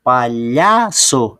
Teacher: É o lhá que é a sílaba tônica